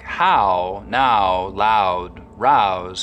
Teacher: about house mouth in words like how now loud rouse canadians still use that wide ow diphthong